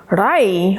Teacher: It then curls up and hits the top of the palate to make the R sound. Rai, ra is the tip of your tongue hitting the top palate